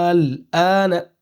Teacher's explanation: اس مد کو لمبا کھینچیں گے 5 الف کے برابر، اور اس کو کھینچنا ضروری ہے، لازم مطلب ضروری ہے۔